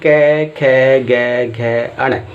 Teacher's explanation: इसमें जो हमारी हवा निकलती है वो कंठ से निकलती है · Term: कंठ्य व्यंजन